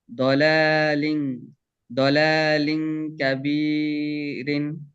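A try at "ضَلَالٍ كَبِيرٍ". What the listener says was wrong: হ্যাঁ, গুন্না কিন্তু একালিফ সমান হবে, গুন্না কম হয়ে যেতেছে। কাবি, এখানে গুন্না করা যাবে না। কাবিরিন, কাবিরিন।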